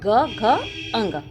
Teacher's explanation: तीसरा चौथा पांचवा जैसे ग घ अंग ये क्या है यह सघोष है